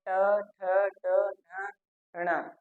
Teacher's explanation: तो मूर्धन्य का अर्थ होता है ऊंचा। तो मुख में इन व्यंजनों का उच्चारण करते समय जो हमारी जिया है वह सबसे ऊंचे स्थान पे होती है, इसीलिए ये मूर्धन्य कहलाते हैं।